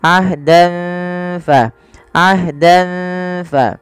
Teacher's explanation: samarkan tanwinnya kepada huruf fa karena ia bacaan ikhfa yang dimana ada fathatain bertemu dengan huruf fa.